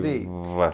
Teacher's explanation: The word is leave with a voiced V. Leave. Keep the voicing going Leave.